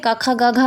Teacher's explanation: कंठ में हमारे क ख ग घ आते हैं। क क ख ग और घ क वर्ग वाले हमारे कंठ में आते हैं।